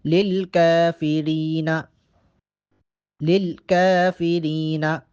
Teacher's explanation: کاف پہ کھڑا زبر ہے، کاف کو 1 الف کے برابر لمبا کر کے پڑھیں گے۔ للکافرین، للکافرین، یہاں یہ بات ذہن نشین کر لی جائے کہ کاف کو باریک پڑھیں گے، اگر کاف کی جگہ یہاں قوف پڑھ لیں موٹا کر کے وہ غلط ہوگا، للقا وہ غلط ہو جائے گا۔